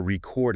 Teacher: if I want to record a song, that's a verb. Stress is at the end.